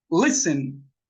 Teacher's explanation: Listen. El acento no está en la última sílaba. Está en la primera. Listen. Es decir, no dice listen, sino que dice listen.